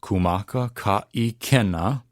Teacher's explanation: If you notice in this first line, we have kumaka, ka, and in that case, the consonants are breaking up the vowels, so there's no need to worry about running them together with okina or not okina. And then ikena has the okina, so we're going to stop our breath again